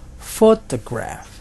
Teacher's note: photograph ada 3 syllables dan penekanannya atau stresnya ada di syllable yang pertama di photograph. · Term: word stress